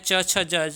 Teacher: ध्यान रखिएगा, स्पर्श संघर्षी कहा जाता है च, छ, ज, झ को।